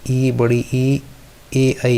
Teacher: तो अब यहाँ पर अग्रस्वर जीभ के प्रयोग के आधार से, जीभ जिन स्वरों को बोलने में आगे वाला हिस्सा जीभ का प्रयोग में आता है उन्हें अग्र कह देते हैं। ई, बड़ी ई, ए, आई आप बोल के भी देखोगे तो अग्रभाग पर प्रभाव ज़्यादा है।